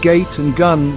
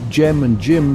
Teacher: The pronunciation of G often depends on its position within a word and the vowels surrounding it. Words like gate and gun retain the hard G, while words like gem and gym showcase the softer J sound